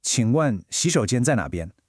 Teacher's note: Hear that polite questioning tone? It's got a slight rise at the end.